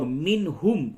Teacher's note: نون ساکن کے بعد ہا ہے، اس جگہ پہ اظہار ہوگا